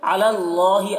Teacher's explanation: اللہ کا لام کو پر پڑھیں گے، اللہ کا لام سے پہلے زبر ہے